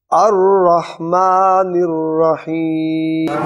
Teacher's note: الرحمن میں جو ہا ہے یہ بھی حلق سے آئے گی اور الرحیم میں ہا یہ بھی حلق سے آئے گی